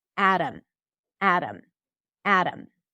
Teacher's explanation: A D A M pronounced exactly the same because the flap T actually sounds like a D that is a flap D. It's not duh.